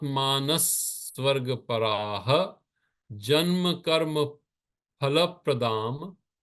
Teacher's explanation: So, kamatmanah svarga paraha. The paraha, the visarga disappears before the ja, and that's another part of the sandhi.